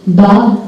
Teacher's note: Si vous prononcez bas, vous devez sentir une vibration. Une petite vibration, c'est la vibration des cordes vocales